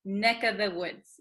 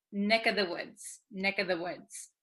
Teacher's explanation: this of becomes just the vowel sound